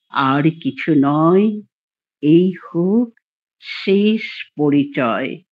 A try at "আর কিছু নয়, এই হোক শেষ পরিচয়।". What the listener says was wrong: কবিতাটা খুবই সুন্দর, কিন্তু রটা বড্ড বেশি হয়েছে।